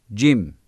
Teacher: dilin ortası üst damağa vurularak çıkarılır ince aşikar ve sert okunur